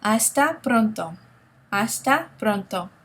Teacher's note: do you hear the the slight Trill the slight roll the sound in Pronto